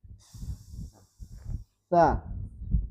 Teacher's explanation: Sa ujung lidahnya ditempel ke gigi seri atas. Kalau sa yang didorong angin, nggak boleh bunyi pita suaranya, nggak boleh. Pastikan angin saja yang keluar. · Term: hams